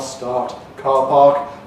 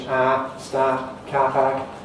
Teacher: Another thing very characteristic of Australian English concerns the vowel in words like start, back in the southeast of England, R, start, car park, front in Australian English, start, car park.